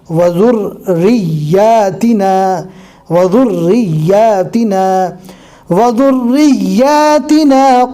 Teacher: رو اور یا دونوں پر تشدید ہے، لہٰذا دونوں حروف کو ڈبل بار پڑھنا ہے